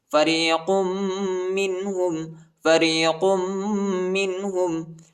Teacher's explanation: قاف کو میم کے ساتھ ملائیں گے اور غنہ بھی کریں گے